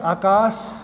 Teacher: तर हामीले यसलाई आकाश भन्छौँ, दन्ते स लगाएर उच्चारण चाहिँ दन्ते स भन्छौँ